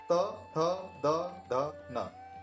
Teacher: लगी जीभ दांत पर।